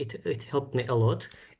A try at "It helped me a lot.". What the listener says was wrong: I hear help. I don't know if you're using past helped. We should have that t, or if you're using present simple, it help without that third person s. It helps me a lot, or it helped me a lot.